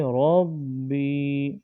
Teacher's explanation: رو کو موٹا پڑھیں گے اور با میں جماؤ کریں گے، یعنی کہ ربی نہیں پڑھنا بلکہ ربی۔